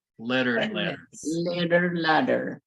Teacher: the TT and the DD are going to sound exactly the same